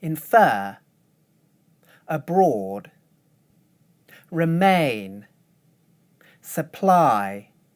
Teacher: Notice that now the stressed syllables start high but finish low.